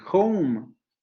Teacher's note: diccionario de Cambridge, al igual que McMahon, postula la existencia de un diptongo OU